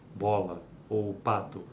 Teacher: Vamos pensar na consoante da palavra bola ou pato. Ela é obstruída pelos lábios, bilabial